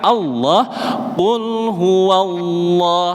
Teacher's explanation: lidah bagian belakang panjenengan angkat. Ini yang membuat huruf lamnya menjadi tebal.